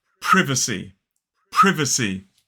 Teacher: 3 syllables, the stress is on the first syllable. Whereas in American English, it's more like privacy.